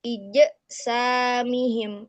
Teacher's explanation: kesalahan umum yang sering terjadi ketika mengucapkan huruf jim adalah memantulkan huruf jim dengan menambahkan makhraj hamzah